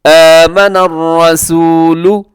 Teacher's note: سب سے پہلے آمن الرسول، یہاں را ہے، را کے اوپر حرکت ہے تو را موٹی ہوگی، اور اسے رسولو نہیں کرنا، آمن الرسولو یہ غلط ہے۔ آمن الرسول لام پیش لو، ہونٹ آپ کی گول ہو جائیں